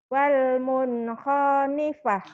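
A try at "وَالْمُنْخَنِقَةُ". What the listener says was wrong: Enggak ada. Enak aja pa orang titiknya 2. Emang ada yang panjang? Saya tanya, ada yang panjang enggak? Jangan dipanjang. Wal munkhoniqah.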